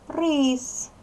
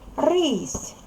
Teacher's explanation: змінився останній був твердий приголосний став М'який приголосний і слуначення слова змінилося буква знак м'якшення разом із попередньою буквою